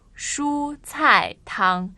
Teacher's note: They have first tone, fourth tone, and first.